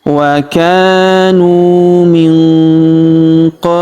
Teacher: Huruf nun sukun bertemu huruf qo maka nun sukunnya melebur ke huruf qo. Kita baca dengung dan samar. Dengungnya kita tahan dua sampai harakat. · huruf nu kita panjangkan dua harakat karena wau sukun di depannya alifnya tidak dibaca.